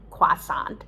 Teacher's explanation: you could say croissant with a kw sound